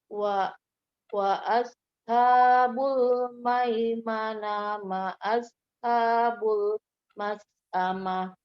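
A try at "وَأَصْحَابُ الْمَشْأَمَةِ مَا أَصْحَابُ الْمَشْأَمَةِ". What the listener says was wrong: Ya, diperhatikan lagi bacaannya. Salah ya, bukan maimanah, mas'amah, tima sama mas'amah tadi.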